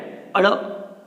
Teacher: અળ બોલી એટલે થડકાર લાગે, એટલા માટે એને સાદી ભાષામાં કેવું હોય તો થડકાર વાળો વ્યંજન કહી શકીએ.